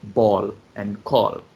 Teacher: the word ball and call we have dark l at the end